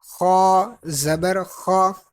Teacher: خا کیونکہ مستعلیہ حروف میں سے اس کو پر پڑھیں گے، موٹا پڑھیں گے. خا زبر خا، ہونٹوں کو گول نہیں کرنا.